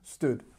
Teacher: notice there's no n Sound in the past form just stood